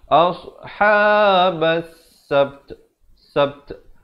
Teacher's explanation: Habas, ba beri atas terus naik di atas sin. Jadi sini alif lam syamsiah. Lamnya tidak dibunyikan.